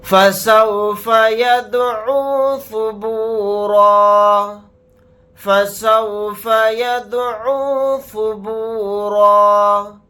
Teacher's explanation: یہاں پر دال کے اوپر جزم ہے تو اس کے اندر قلقلہ کریں گے. اور اگر ہم یہاں پر آیت کرتے ہیں تو را الف کے ساتھ ایک زبر لگا کر پڑھیں گے، دو زبر نہیں پڑھے جائیں گے.